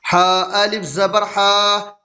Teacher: الف سے پہلے ہا پر زبر کی حرکت ہے، اس لیے الف مدہ ہوا، الف مدہ کو ایک الف کے برابر کھینچ کر پڑھیں۔